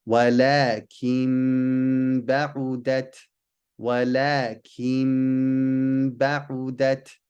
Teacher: we change the noon sound to a meme and then do a ghunna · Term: al-iqlab